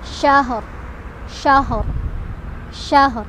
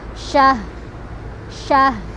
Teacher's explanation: maka huruf terakhir yang ro-nya dibaca pelan aja, berisyarah saja, hanya terdengar oleh kita sama orang terdekat.